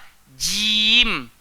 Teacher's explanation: Tengah-tengah lidah, langgar di langit, keras. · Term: huruf jim